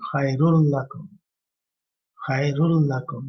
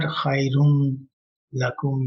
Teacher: we just take the dhamma of ra and go to next to l without nasalization. So khairul lakum says no noon sound coming. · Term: assimilation